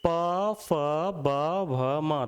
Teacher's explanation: दोनों होठ जुड़ जाते हैं इनके उच्चारण के लिए।